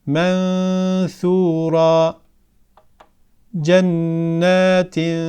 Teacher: ihfa yaparken nunun sesi gunesi bir elif miktarı uzatılır